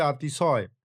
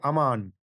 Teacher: যখন আমরা কোনো শব্দের প্রথম বর্ণে বাড়তি জোর দিই, তখন সেই বর্ণের হস্র স্বরধ্বনিটি, যেমন অ, দীর্ঘস্বরে আতে পরিণত হয়। সহজ কথায়, শব্দের শুরুতে থাকা অধ্বনিটি শাসাঘাতের চাপে পড়ে আ ধ্বনিতে রূপান্তরিত হয়ে যায়